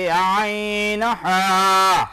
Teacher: 2 number মাখরাজ হালকের মধ্যখান হইতে আইন হা